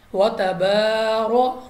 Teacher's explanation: را پر زبر ہے، را کو پر پڑھا